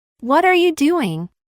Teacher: la primera palabra que termina en consonante se unió con la segunda palabra que Inicia con vocal y como resultado la consonante t quedó en medio de dos